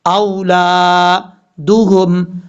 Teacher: ولا اولادہم، حمزہ کے بعد واو ہے، حمزہ کے بعد جو واو ہے یہ واو لین ہے، یعنی اس کو لمبا نہیں کریں گے، حمزہ واو زبر او، لام الف زبر لا، اولادہم۔